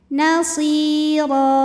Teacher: huruf ro dibunyikan secara tafkhim karena rnya ini berbaris fathah tanwin